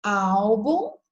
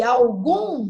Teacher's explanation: Eu tenho álbum, olha, na penúltima, e algum na última.